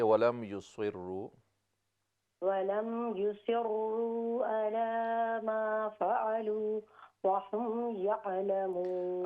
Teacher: یہاں پہ آپ کا عین حمزہ کے ساتھ مل رہا ہے، حمزہ کی آواز آ رہی ہے